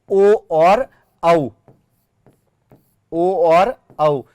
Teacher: ओ और औ, ये जो दोनों वर्ण है ये दोनों वर्ण कंठोष्ठीय वर्ण कहलाते हैं।